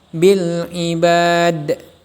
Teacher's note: Apabila ada huruf qalqalah berada di akhir ayat atau tempat berhenti, maka hukum bacanya disebut qalqalah kubra. Cara membacanya dengan memantulkan bunyi huruf qalqalah secara jelas.